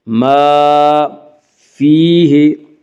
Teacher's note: یا مدہ کو 1 الف کے برابر کھینچ کر پڑھیں گے